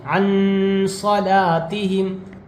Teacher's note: نون ساکن کے بعد حروف اخفا کے 15 حرفوں میں سے سواد آیا ہوا ہے اس لیے نون کی آواز کو ناک میں چھپا کر پڑھ رہے ہیں